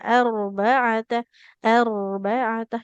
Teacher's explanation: naikkan pangkal lidah dalam pengucapan huruf ro yang tebalnya.